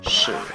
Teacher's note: drop your voice with the third tone